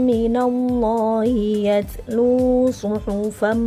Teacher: Karena menjadi hukum idgham bi gunnah, ya, melebur, tanwinnya masuk ke dalam huruf mim